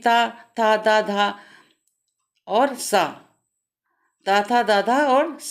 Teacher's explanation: जिन व्यंजनों के उच्चारण में जीभ जीव नहीं, जीभ की नोक ऊपरी दांतों को स्पर्श करती है, दंत व्यंजन कहलाते हैं